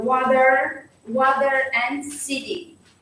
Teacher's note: A letter T between two vowels often sounds like a soft D.